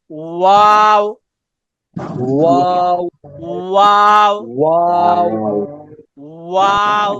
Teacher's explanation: দুই ঠোঁট গোল করে সামান্য খোলা রেখে উচ্চারিত হয় ওয়াও